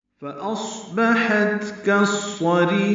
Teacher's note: صوت ساکن پہ حمس ہوگا، سانس جاری رہے گی